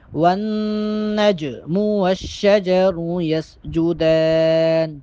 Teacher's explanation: دال پہ کھڑا زبر ہے، دال کو ایک الف کے برابر لمبا کر کے پڑھیں گے۔